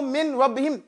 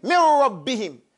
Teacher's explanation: Goes, it's dakhala, that noon into the ra, no more noon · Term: idgham